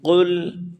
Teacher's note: زبان کی جڑ اوپر تالو نرم حصے میں سے ملا کر ادا کریں گے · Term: بڑا قاف